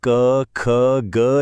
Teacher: गले के सबसे पिछले हिस्से से यानी कंठ से। यहां से निकलती हैं क, ख, ग जैसी गहरी आवाजें। इन्हें कंठ्य कहते हैं।